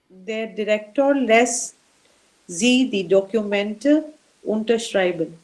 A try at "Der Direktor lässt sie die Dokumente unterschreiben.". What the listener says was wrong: It's not English, it's German. It's not you, it's U. No, Documenta. You said document.